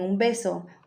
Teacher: antes de P y B va m debido a la asimilación